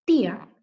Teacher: la I va a quedar en una sílaba, ti, y la A va a quedar en otra sílaba, A. Por lo tanto, eso es un hiato, ¿ya?